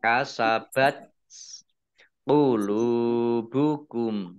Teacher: ini tak sukun ya, keluar S-nya sedikit.